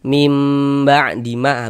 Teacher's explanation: dengan merapatkan kedua bibir seperti biasa kita baca mim gitu, mim rapat kedua bibirnya, namun tidak diberikan tekanan. Jadi bibirnya itu jangan ditekan, dirapatkan saja. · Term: iqlab